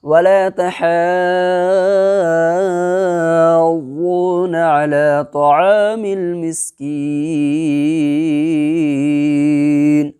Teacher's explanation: 3 سے 5 الف کے برابر اس کو بھی کھینچ کر کے پڑھنا ہے ٹھہرنے کی صورت میں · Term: مد عارض وقفی